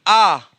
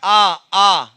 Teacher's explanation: विव्रत आ, देखिए पूरा मुंह खुल रहा है, आ बड़ा आ, पूरा मुंह खुल रहा है आपका